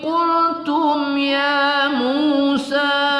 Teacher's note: mim sukun bertemu ya, tidak kita dengungkan pada izhar syafawi ya, kita baca satu alif dua harakat.